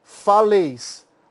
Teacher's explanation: o acento cai em leis